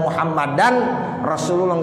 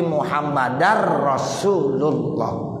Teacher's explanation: Tanwin, suara tanwin udah nggak ada lagi, udah nggak muhammadan rasulullah, nggak begitu, tapi muhammadar rasulullah. Tuh, jadi tanwin kalau ketemu roh itu idgham bila gunnah